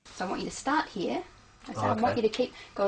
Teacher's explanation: did you hear the falling tone at the end